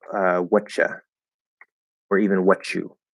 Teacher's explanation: the very informal way to say this is to just drop are. So instead of saying what are, connecting that what are you doing or what are you doing, we'll say like whatcha or even what you.